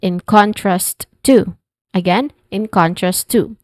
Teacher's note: Pronunciation wise we start with in we're familiar with that and then contrast where con is the stress syllable and then two.